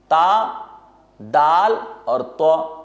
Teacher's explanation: زبان کی نوک اور ثنایا علیا کی جڑ، جہاں پر ذرا سا گوشت ابھرا ہوا ہے، جب اس حصے کے ساتھ لگے یہ 3 حروف ادا ہوں گے.